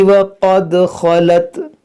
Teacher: قاف حروف مشتعلیہ ہے، اور خا بھی، دونوں کو موٹا کریں گے